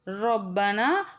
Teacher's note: ராவுல ஜபர் இருக்கும்போது ராவ வல்லினமா சொல்லணும்